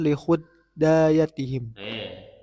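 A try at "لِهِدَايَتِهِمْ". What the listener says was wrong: masa huda huda pakai alif gitu nah pakai alif merengkel alif maksuroh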